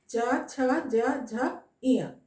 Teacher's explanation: तो चछा जजा इया, इसका जब हम उच्चारण करते हैं तो हमारे मुख का जीभ जो है वो उठकर तालु को छूता है और फिर वापस आ जाता है। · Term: तालव्य